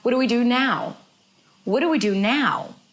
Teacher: She's not going higher in pitch, but it's longer.